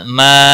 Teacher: مد منفصل ہے 3 الف کے برابر کھینچ کر پڑھیں گے